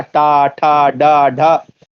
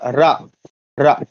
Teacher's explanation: टा में पूरा मूर्धा पे जाती है, लेकिन रा में उतनी नहीं जाती है